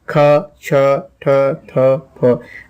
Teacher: अगर आप इन व्यंजनों का उच्चारण करेंगे प्यारे बच्चों तो देखेंगे वायु की जो मात्रा है वो अधिक मात्रा में वायु मुख से निकलती है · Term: महाप्राण व्यंजन